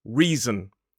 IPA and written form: ˈriːzən (reason)